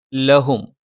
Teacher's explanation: ല നാവിൻ്റെ അറ്റം മേലെ മുൻപല്ലിൻ്റെ മോണയിലാണ്. ഹ തൊണ്ടയുടെ താഴ്ഭാഗം.